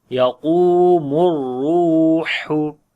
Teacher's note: Yaqumur, qaf we read in heavy sound and also we long due to waw madda. Ra we read in heavy sound and also we long due to waw madda.